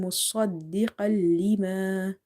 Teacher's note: Never read it like seen, because in seen you see your lips are more stretching, but when you say the letter sod, the lips are more round. Okay, so keep the lips round when you're saying مصدقا لما.